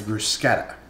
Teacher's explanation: There is no, like, sh sound with the ch in Italian. That's always a hard k.